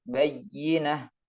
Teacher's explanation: Maka agar lebih jelas tasydidnya, diberi tekanan suara lebih tinggi dari huruf sebelumnya dan setelahnya yang diistilahkan dengan nabar. Contohnya bayyinah, jadi ditekan suaranya bayyinah.